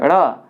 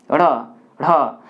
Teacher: जीभ जो है एक मूर्धा में ऊपर आकर टच कर रहा है और झटके के साथ नीचे आ रहा है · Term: द्विगु व्यंजन